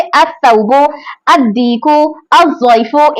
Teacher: जब ये सिंगल हो और स्टार्टिंग में हो तो इसका लाम नहीं पढ़ेंगे शमसिया वाला, शमसिया के शुरू में जो अलिफ लाम आ रहा है उसको लाम को अदा नहीं करेंगे, बल्कि हमजा को अगर वो सिंगल हो और शुरुआत में हो तो तब अदा करेंगे, जैसे अस-सौबु, अद-दीकु, अज़-ज़ैफ़ु, इस तरह से। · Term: हुरूफ शमसिया